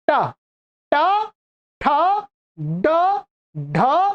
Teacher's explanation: अर्थात इनके उच्चारण स्थान में जो जिहवा है जिह्वा का अग्र भाग मूर्धा की तरफ मुड़ता है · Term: मूर्धन्य